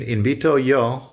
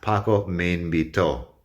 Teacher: The difference is the accent over the O in Paco me invitó. When you say it that way with the strong O sound at the end, that's the strong syllable in the word.